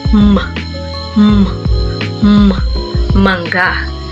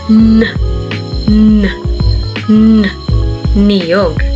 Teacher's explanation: Sa pailong ang hangin na nahaharang dahil sa pagtikom ng mga labi, pagtukod ng dila sa itaas ng mga ngipin o kaya'y dahil sa pagbaba ng velom ay hindi sa bibig kundi sa ilong lumalabas.